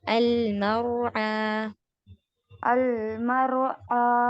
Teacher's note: والذی اخرج المرعى. مر نہیں، را پر ہول رکھنا ہے اور را ہیوی کرنا ہے. اس سے پہلے فتحہ ہے.